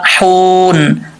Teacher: اب یہاں پہ وقف کریں گے تو نون ساکن ہو جائے گا